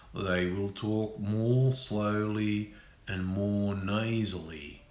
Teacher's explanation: it's still an Australian accent but it's slower and it's a bit more nasal